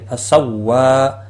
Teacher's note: فسوا وا کے اوپر کھڑی زبر ہے 1 الف کے برابر کھینچ کر پڑھیں گے